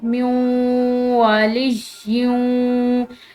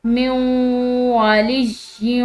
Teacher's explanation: یہاں پر یا کی تنوین کے بعد واو آ رہی ہے، تو یہاں پر بھی ہم نے غنہ کے ساتھ ملا کر یعنی کہ ادغام بالغنہ کرنا ہے، ٹھیک ہے، مدغم کرنا یعنی کہ ایک دوسرے میں ملا دینا، ٹھیک ہے۔